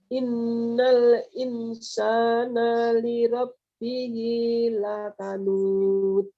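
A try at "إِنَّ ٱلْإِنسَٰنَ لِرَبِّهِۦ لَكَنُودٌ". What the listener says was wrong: Nanya masih nyeret. Insana terus kanud pantulkan. Untuk mengurangi yang nyeret itu jenengan harus berlatih di situ, ya.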